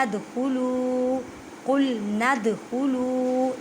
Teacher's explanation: دال ساکن ہے تو قلقلہ کریں